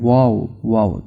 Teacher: वाओ की आवाज हंठों को गोल करने से होती है।